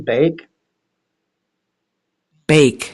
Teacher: I'm claiming that it's eh followed by E.